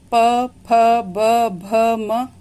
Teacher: बड़ा उ जब बोलते हैं प, फ, ब, भ, म, तो इन्हें आप बोलकर देखेंगे तो इन वर्णों का जब उच्चारण होगा तो उच्चारण स्थान दोनों ओष्ठ होगा। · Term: ओष्ठ्य